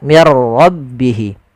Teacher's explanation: Ra itu punya sifat namanya sifat takrir, tapi takrirnya hanya satu saja, tidak boleh berulang. Mir ra, enggak, tapi langsung saja mir rabbihi.